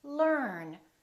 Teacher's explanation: the American R is never silent it's not silent at the end of the word and also before another consonant